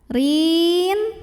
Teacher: Ra ini dibaca secara tarqiq karena ra-nya berbaris kasrah, bacanya tipis, lidah datar.